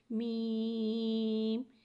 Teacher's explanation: میم ایک الف یعنی 3 مقدار کھینچ کے پڑھتے ہیں۔ میم حرف شفویہ ہے، میم دونوں ہونٹوں کے خشک حصے سے ادا ہوتا ہے